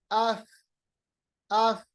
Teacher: जब अफ आप पढ़ेंगे, फा को साकिन बनाएंगे, तो फा की जो आवाज है वो पस्त होगी, नरम होगी, मुलायम बनेगी